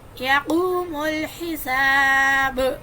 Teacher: قاف کو موٹا, یہ واو مدہ ہے, واو ساکن پیچھے پیش ہے